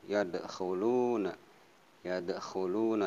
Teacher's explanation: ada huruf dal mati atau sukun, ini qalqalah sugro